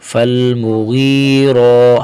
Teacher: حرف غین کو بھی موٹا کریں گے اور را کو بھی موٹا کریں گے. غین کو بھی موٹا کریں گے اور یہاں آگے را کو بھی موٹا کریں گے.